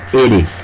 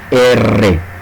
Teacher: Entonces tenemos una vibrante leve y una vibrante más intensa.